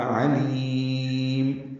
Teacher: لام باریک ہے اور لی یہ یائے مدہ ہے، اور اس کے بعد میم ساکن وقف کر رہے ہیں میم ساکن پہ تو اس پہ اظہار ہوگا. علیم، ہونٹ بند کر لیں گے، دونوں پیشیں ختم ہو جائیں گی. اکثر لوگ علیم ہونٹوں کو ہلا دیتے ہیں، آپس میں جوڑتے ہوئے ہونٹ ایک دم کھول لیتے ہیں، جس کی وجہ سے میم پہ قلقلہ ہو جاتا ہے، یہ غلط ہے.